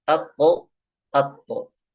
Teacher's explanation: huruf ko dan to itu tidak boleh ditipiskan ketika pemantulannya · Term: qalqalah